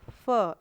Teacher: ये फ ओठ के साथ साथ इसमें वायु भी निकलती है मुंह से